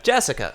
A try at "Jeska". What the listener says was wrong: It's not Jessica, it's Jeska. There's no I in Jessica.